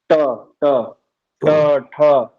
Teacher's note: जहां पे टा आप बोलते समय आपका जीभ टच करता है वो मूर्धा है · जीव तालु से ऊपर जा रहा है, ट ट ट ठ, जीव मुड़ भी रहा है ना। वो मूर्धा जो है वो तालु से ऊपर है।